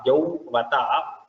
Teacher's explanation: It's a little difficult because Au and then Ba, both the lips come and then the teeth comes into play. So Yau and then Vata.